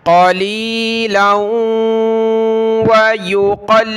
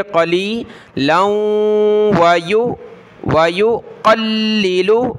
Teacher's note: لام کو واو کے ساتھ ملائیں گے، ناک میں آواز پیدا کریں گے ، قَلِيلًا وَيُقَلِّلُ، قاف لام زبر قل، لام زیر لی، قلی